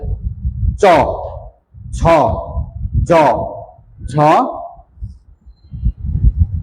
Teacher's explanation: এই দেখো, এই কয়েকটা উচ্চারণ করার সময় দেখা যাচ্ছে আমাদের তালুতে লাগতেছে, চ চ, জিহ্বাটা তালুতে লাগতেছে, বিধায় এই বর্ণ কয়টাকে বলা হয় তালব্য বর্ণ